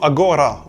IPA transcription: a.ˈgo.ɾa